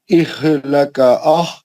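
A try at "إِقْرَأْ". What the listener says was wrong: नहीं, वैसा नहीं पढ़ना, वैसा लगातार नहीं पढ़ना. इह लंबा लंबा इह लका नहीं, एक सांस में नहीं पढ़ना.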